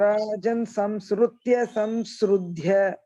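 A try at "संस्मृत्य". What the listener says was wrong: Not sru, smriti, smriti, no. Smaram, smriti.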